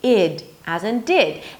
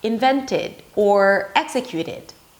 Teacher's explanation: the third option is 'id' a relaxed 'i' sound and a 'd'.